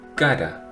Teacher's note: Or we pronounce it as a soft D, as in cara, between the vowels. In English, you have the same pronunciation as in red.